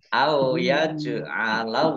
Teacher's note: jim sukun bacaan kolkolah dibaca memantul ditampakkan pantulannya. Yaj'alallahu Allahnya dibaca tebal karena harokat di depannya fathah.